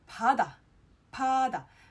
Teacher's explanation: So when the B or the syllable is in the first character spacing, it sounds more like a P. However, if it's in the second character spacing or thereafter, it's pronounced more like a B.